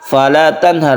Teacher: fala tanhar nun bertemu dengan ha ini adalah izhar dan jelas